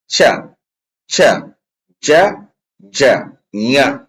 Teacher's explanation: ತಾಲವ್ಯ ಅಂದ್ರೆ ಏನಪ್ಪಾ ಅಂತ ಕೇಳಿದ್ರ ಈ ನಿಮ್ಮ ಮೇಲ್ದಂತ ಅದಾವಲ್ಲ, ಮೇಲ್ದಂತದ ಒಳಭಾಗದಾಗ ಒಂದು ವಸಡಿದೆ ನೋಡ್ರಿ, ಆ ನರ ತರ ಹತ್ತೈತ್ ನೋಡ್ರಿ, ಅಲ್ಲಿ ನಾಲಿಗೆ ಟಚ್ ಆಗಿ ಏನಾಗತ್ತಪ್ಪ ಅಂತ ಕೇಳಿದ್ರ ಈ ಅಕ್ಷರಗಳು ಉಚ್ಚಾರಣೆ ಆಗ್ತಾವ. ಉದಾಹರಣೆಗೆ ಛ, ಛ, ಜ, ಜ, ಞ ಅಂತಕ್ಕಂಥ ಅಕ್ಷರಗಳನ್ನ ತಾಲವ್ಯ ಭಾಗಕ್ಕೆ ಹೊಡೆದೇ ಉಚ್ಚಾರಣೆ ಆಗ್ತಕ್ಕಂಥದ್ದು.